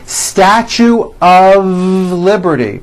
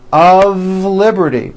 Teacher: we pronounce the word of with a voiced V.